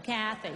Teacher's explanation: So the emphasis is on the first syllable